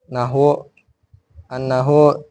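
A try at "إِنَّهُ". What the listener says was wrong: Innahu kan, bukan anna, inna.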